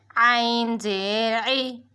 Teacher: عین ہمارے حلق کے درمیانی حصے سے ادا ہوگا